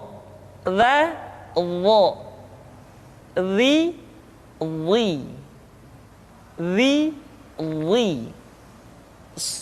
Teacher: diucapkan dengan menyentuhkan ujung lidah dengan dua gigi seri bagian atas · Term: huruf dha